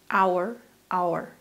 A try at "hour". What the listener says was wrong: Well done. They said exactly the same. Good job.